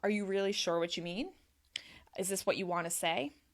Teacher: I'm giving sort of a more even tone because I don't want the person to doubt what I have to say